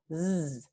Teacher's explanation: Entonces, esta aquí tiene mismo punto de articulación, mismo modo de articulación, entonces predorso alveolar, fricativa, pero no es sorda, es sonora, porque vibran las cuerdas vocales. Este alófono Z ocurre antes de una consonante sonora por, de nuevo, asimilación. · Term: fricativa, predorso alveolar